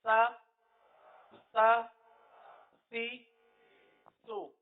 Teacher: زبان کا سرا اوپر کے دانتوں کے اندرونی کنارے پر لگ کر نیچے آ رہا ہے